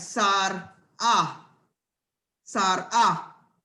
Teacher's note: Okay, now we're gonna do something here. Sar, you're gonna have to say Sar, and you're gonna put a glottal, and you're gonna have Sar ah